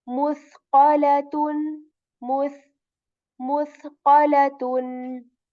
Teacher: For a tha letter, there isn't any whistle sound in it, but air is removed a little bit